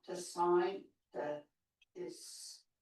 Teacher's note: She's mixed up the phonemes for sun and shine there. She said sign rather than sunshine.